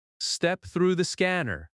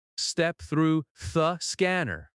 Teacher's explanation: In quick speech, through the might blend together.